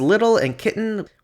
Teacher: English and German both allow the velar nasal /ŋ/ at the ends of syllables only, and have syllabic l and n after consonants at the ends of words